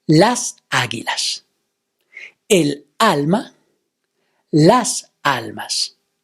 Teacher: all these words have the stress of the word on the very first syllable